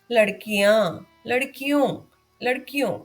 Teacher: ओ भी दीर्घ स्वर है, यहाँ भी एक चंद्र बिंदु आना चाहिए, किंतु यहाँ पर जगह की कमी के कारण एक बिंदु ही लगा है, परंतु ध्वनि अनुनासिक यानी चंद्र बिंदु की ही आती है।